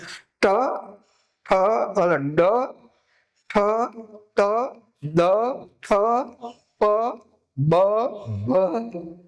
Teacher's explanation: પછી જ્યારે હવા રોકાય અને પછી એકદમ સ્ફોટ થાય તો એને સ્ફોટક વ્યંજન કહ્યા છે.